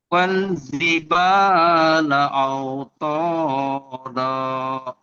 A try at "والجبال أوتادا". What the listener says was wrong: তো না তা তয়া আকারে তা আও তা দা